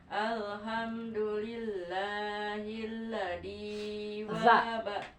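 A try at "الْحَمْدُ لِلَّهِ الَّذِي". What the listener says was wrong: Alhamdulillahillazi zal empuk ya. Zi benten sareng dek kade ayo.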